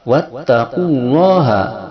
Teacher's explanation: lafaz Allah yang sebelumnya adalah doma, dia dibaca dengan tabhim, dibaca o tebal